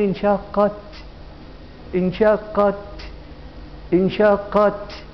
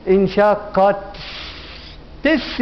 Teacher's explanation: نهمس همسا بشرط الا يترتب عن هذا الهمس حرف زائد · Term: همس الكاف والتاء